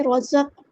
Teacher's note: قاف میں قلقلہ ہو رہا ہے، باؤنسنگ وائس آئے گی، ہم نے آواز کو باؤنس کرنا ہے۔